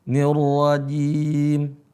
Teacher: Perhatikan jimnya, ya. Enggak ada desisnya.